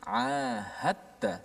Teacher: dal itu dimasukkan secara totally dalam ta. Sebab tu ada sabdu di atas ta dan tidak ada apa-apa tanda di atas dal. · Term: idgham